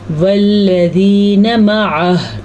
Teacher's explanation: وقف کرتے ہوئے ہا کی آواز ضرور آنی چاہیے